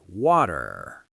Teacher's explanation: You really have to curl that tongue back at the end.